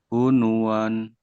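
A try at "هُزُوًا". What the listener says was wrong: Hunuan. Bukan nun ini. Zai. Kalau nun bukan begini. Zai ini. Zai ya. Nih, kalau nun kan gini tuh titiknya ada rumahnya. Ini kan ke bawah. Cuman tulisannya begini ya. Harusnya kayak ro ya. Ini gitu. Tapi ini zai. Huzuan ya.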